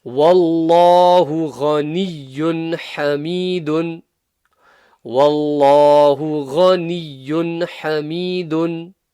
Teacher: Here we have an example of Allah's name being full mouth because it has the fatha before it.